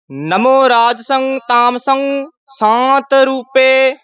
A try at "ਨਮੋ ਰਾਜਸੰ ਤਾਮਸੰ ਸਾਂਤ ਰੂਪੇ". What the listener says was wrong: ਜਜਾ ਰਹਿ ਜਾਂਦਾ ਰਾਜਸੰ ਕਹਿ ਜਾਂਦੇ ਹਾਂ ਰਾਜਸੰ ਜਜਾ ਪੂਰਾ ਬੋਲਣਾ ਹੈ।